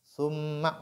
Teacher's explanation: on fait la nasalisation, mi mushaddada, elle est nasalisée